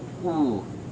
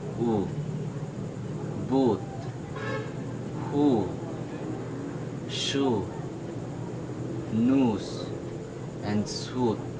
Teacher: As you focus on my lips, it is protruding, quite rounded, but almost closed. It's a very long sound. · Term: back vowel